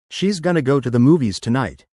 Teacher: Try connecting movies and tonight a bit more, and shorten gonna even further.